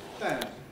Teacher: In English, basses, that's a B, but the vibration doesn't actually start, really, until about the release. The B is typically devoiced, as we say.